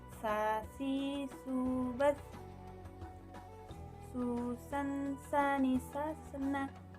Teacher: diucapkan dengan menggunakan lidah terdekat hampir di atas dua gigi seri bagian bawah. Seperti bagaimana kita melafalkan huruf za, tetapi diiringi dengan mengalirnya suara dan nafas bersamaan. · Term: huruf sin